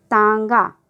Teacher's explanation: अब देखिए तांगा हम उच्चारण कर रहे हैं ना, तो हमारी हवा जो है वो मुंह से और नाक दोनों जगह से निकल रही है। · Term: अनुनासिक स्वर